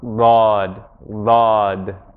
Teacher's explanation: the linguists also speak about this sound being pronounced from one side of the mouth, usually from the left side